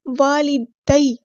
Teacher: یا لین آ گئی تو نرمی سے موڑیں گے